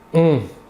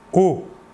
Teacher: On. Alors que pour le O, qui n'est pas nasal, vous ne sentirez pas d'air passer sur votre doigt. O.